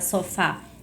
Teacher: eu tenho acento tônico porque eu tenho a minha sílaba tônica que é a sílaba fá